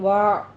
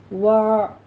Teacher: یہ عین کی آواز وسط حلق میں جا کے سٹاپ کرے گی ، وَآ نہیں کہنا، جھٹکا بھی نہیں دینا ہے اور قلقلہ